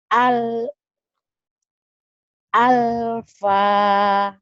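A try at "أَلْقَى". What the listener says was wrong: alko Bu, titiknya 2. Alfa mah ada Indomaret Bu, Alfa. Ini alko Bu, alko.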